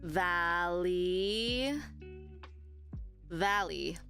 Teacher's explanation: if you put the stress in VA at the front you'll say Valley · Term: primary stress